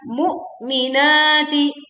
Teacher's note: Ini ada hamzah sukun, maka suara tertahan ya.